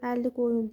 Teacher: Baxın qoyun da vurğu axıra düşür.